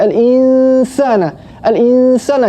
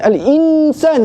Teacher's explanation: Kena dengung, kena sembunyikan nun tu ke dalam huruf sin. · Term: ikhfa' hakiki